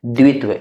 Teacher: द्वित्व द को हम बहुत ही कम समय के लिए बोलते हैं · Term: आधे वर्ण की तरह